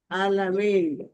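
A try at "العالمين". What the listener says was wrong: আল, এটা পড়তে হবে কি? আল আলামিন, আল, আল আলামিন।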